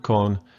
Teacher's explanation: it's flat means it's your normal voice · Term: flat tone